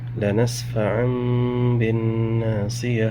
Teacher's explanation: یہاں دیکھ سکتے ہیں دو زبر ہے یعنی تنوین کے بعد با آ رہا ہے۔ اب یہاں نون ساکن کو میم میں بدل دیں گے اور غنہ اکفا کے ساتھ پڑھیں گے۔